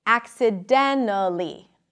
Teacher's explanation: when the T appears after an N in unstressed positions, you can often drop it